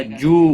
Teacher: واو مدہ ہے، ایک الف کے برابر کھینچ کر پڑھیں گے